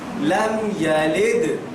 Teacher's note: دال پر قلقلہ کریں گے, یعنی دال کی آواز پلٹ کر واپس آئے گی